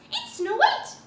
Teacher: The one thing I would recommend though is end 99% of your sentences as if you're asking a question, because what Snow White does Is when Snow White talks, everything goes up. Everything goes up at the end of the sentence.